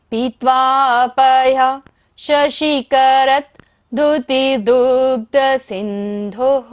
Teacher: विसर्ग है, दोबारा से सांस का विसर्जन करना है।